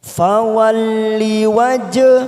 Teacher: Fawalli wajh qalqalah sugro karena mati di tengah kalimat